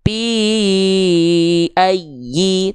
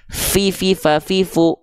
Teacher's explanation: kalau huruf Fa tepat dilafalkan dia akan mengalirkan hembusan angin nama sifatnya hams